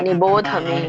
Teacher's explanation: ಭೋ ಮಹಾಪ್ರಾಣ ಇಲ್ಲ ಅಲ್ಲಿ, ಭ ಮಹಾಪ್ರಾಣ ಇಲ್ಲ, ಧ ಮಹಾಪ್ರಾಣ ಇದೆ.